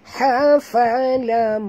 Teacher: Mim bertasydid, wajib dengung.